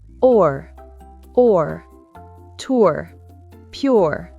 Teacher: Air, air, hair, pair. Le son or est un ou bref suivi d'un R